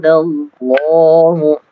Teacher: ro-nya tebal, dallah lamnya tebal, lafdzul jalalah ya, dibaca tebal juga.